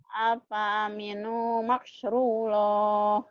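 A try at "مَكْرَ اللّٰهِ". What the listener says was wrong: makro, bukan makru ya, makro, makrullah. Afa aminu makro, bukan ru. Makrullah.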